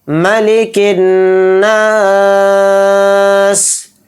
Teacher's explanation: نون میں تشدید ہے تو نون میں غنہ بھی کریں گے